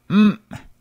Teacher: pronounced as an abruptly ended m